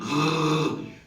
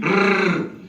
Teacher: Le français ne fait pas vibrer avec la langue, il ne dit pas rrr, il fait vibrer avec la luette au fond de la gorge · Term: uvulaire